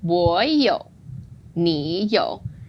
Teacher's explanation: 我 is like 你, originally third tone, and we changed that